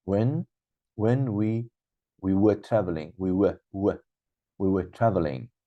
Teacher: were is a positive and it's coming in the middle of a sentence. So that should be weak form.